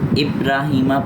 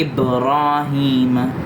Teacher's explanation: با پر قلقلہ کرنا ہے، قلقلہ یعنی آواز کا ٹکرا کے آنا۔ ابراہیمہ پڑھیں گے تو قلقلہ نہیں، ہم نے پڑھنا ہے ابراہیم، آواز ٹکرا کے آئے تو یہ ہوتا ہے قلقلہ۔